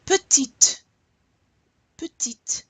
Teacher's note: I really want to hear you pronounce that final T so I know that it's feminine.